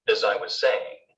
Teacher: the weak pronunciation of as can sound the same as the weak pronunciation of is or has